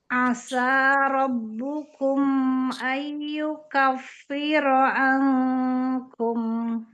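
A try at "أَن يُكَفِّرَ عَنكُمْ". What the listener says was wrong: kafnya di sini mau ada sifat eh hamsnya sedikit ya um ya jadi tampakkan sedikit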